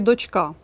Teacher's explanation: наголос запам'ятайте на а